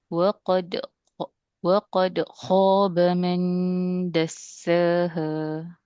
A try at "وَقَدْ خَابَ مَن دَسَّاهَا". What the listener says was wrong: Okey, sikit lagi. Waqad kha. Jangan putuskan bunyi dia. Waqad khaba ma.